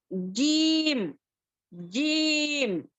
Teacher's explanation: जीम जो है दरमियानी जुबान और दरमियानी तालु, देखो यहाँ पर दरमियानी तालु, दरमियानी जुबान, यहाँ पर देखो ये दरमियानी जुबान जो है दरमियानी तालु को जाकर टच करना, ठीक है। · हमारी दरमियानी जुबान जो है ऊपर तालु की तरफ अच्छे से टच होना